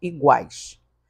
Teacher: quando você fala iguais notem que o u está sendo pronunciado perceberam que tá sendo pronunciado então quando UFO pronunciado tem todo